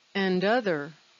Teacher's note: the word and and the word other connect they sound like one word